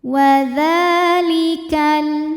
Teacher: hukum tajwidnya adalah Mad Thobi'i muqaddar sebab dalal berharakat fathah panjang cara bacanya dipanjangkan dalalnya dua harakat